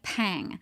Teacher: we have that plosive at the beginning, that P sound, and pang is also a nasal